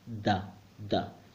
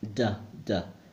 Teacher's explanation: The Spanish one is pronounced by placing the tongue between your teeth